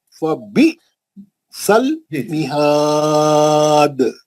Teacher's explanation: हमजा साकिना का झटका है